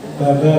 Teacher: Huruf ba itu kan merapatkan dua bibir, Bu.